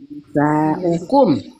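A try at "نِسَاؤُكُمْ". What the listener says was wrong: Oh iya, Nisa'ukum kok Nisa'akum. Nisa'ukum ayo lain. Nisa'akum, Nisa'ukum Bu,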